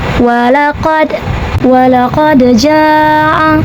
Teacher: Maka cara bacanya adalah dipantulkan dengan pantulan yang kecil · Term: qalqalah sugro